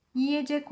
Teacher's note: Burada E sesi daralarak İ'ye dönüşmüş. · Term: Ünlü daralması